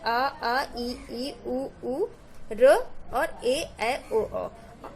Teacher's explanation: ठीक है, तो निर्नुनासिक स्वर क्या होता है? जिन स्वरों के उच्चारण में हवा केवल मुख से निकलती है उन्हें निर्नुनासिक स्वर कहते हैं